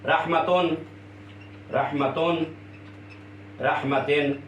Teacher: نون آتی ہے، یہ پڑھنے میں آتی ہے، لکھنے میں نہیں آتی ہے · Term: تنوین